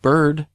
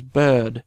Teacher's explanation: a word like bird which is pronounced with a r in American English becomes bed in British English